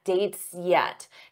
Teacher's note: Notice how that S blends into the Y for yet